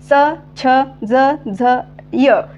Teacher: जिभेचा स्पर्श वरच्या दाताला होते ओके जिभेचा स्पर्श वरच्या दात आणि टाळूला होऊन या वर्णांचा उच्चार होतो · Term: तालव्य वर्ण